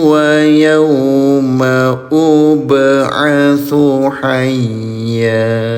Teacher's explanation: Ba sukun namanya qalqalah. Pantulkan cara bacanya